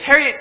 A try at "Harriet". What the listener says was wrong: It's Harriet. Rhymes with parrot. The I is silent. It's pronounced Harriet.